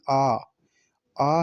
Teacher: जिन स्वरों के उच्चारण में मुख पूरा खुल जाता है वह विवृत स्वर कहलाता है